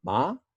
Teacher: there is also a high rising tone